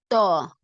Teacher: லேசா சொல்லுவோம் இது தா த கனமா இருக்கணும் தா அழுத்தமா நம்ம சொல்லணும் நாவின் நுனி மேல் முன் நடு பற்களின் வேரில் நன்கு அழுத்தும்